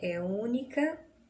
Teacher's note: Percebam que única é acentuada na antepenúltima sílaba. Logo, nós podemos concluir que ela é proparoxítona.